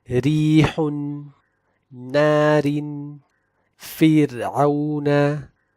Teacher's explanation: The first three conditions correspond to the basic rule that kasrah on the ra or before a sakin ra causes the ra to be in tarqeeq